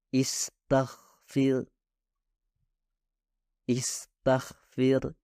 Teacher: huruf ta dan Fa pada kata tersebut sama-sama tidak berasal dari getaran